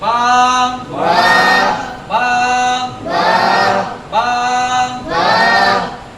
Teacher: আমাদের বাটা উচ্চারণ হবে দুই ঠোঁট থেকে, দুই ঠোঁটের একটু বিজা জায়গা থেকে বা উচ্চারিত হয়।